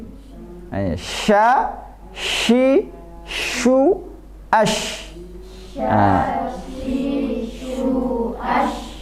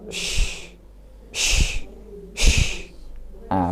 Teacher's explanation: Tengah lidah naik ke mana? Tengah langit-langit. Suaranya menyebar. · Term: tafasyi